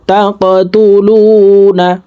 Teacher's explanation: কফ কলকলার হরফ উপরের দিকে ধাবিত করে ধাক্কা দিয়ে উচ্চারণ করব।